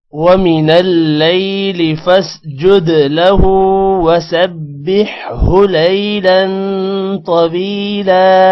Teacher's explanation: فاسجد دال پر قلقلہ ہوگا